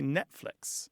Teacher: But the number of people who pronounce the T in Netflix approaches zero. Most Americans, at least, or North Americans who speak English, say Netflix. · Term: glottalization